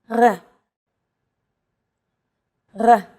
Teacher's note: it's pronounced at the back of the throat instead of forward in the mouth listen to eat it say this letter it's actually closer to · It's actually closer to the German or French R, but without the roll. · This letter is pronounced differently than an English R. It's pronounced at the back of the throat instead of forward in the mouth.